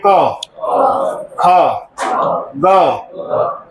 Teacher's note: क का जब उच्चारण करते हैं तो कंठ से आवाज आती है।